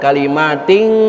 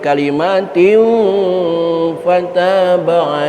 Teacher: tanwin ketemu huruf Fa ikhfa ausat suaranya m bukan Eng